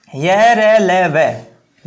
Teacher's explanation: जब आप इनको बोलते हैं तो पूर्ण रूप से आप स्पर्श नहीं करते हैं, आपकी सांस है वो बिना किसी अवरोध के बाहर निकलती है, लेकिन हल्का अवरोध, पूरा अवरोध नहीं, हल्का अवरोध भी इनमें आता है, इसलिए इनको अंतस्थ व्यंजन कहा जाता है।